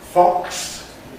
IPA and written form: fɒks (fox)